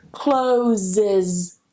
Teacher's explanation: I need to add that extra syllable. I need to add that schwa.